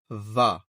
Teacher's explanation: An incorrect way of reading waw is va, which is joining your bottom lip and the top teeth together. That will make it sound very harsh.